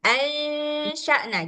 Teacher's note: Suara nunnya jadinya jelas padahal dia bukan izhar, tapi ikhfa. Makanya suara nunnya itu harus samar-samar ya, Mbak.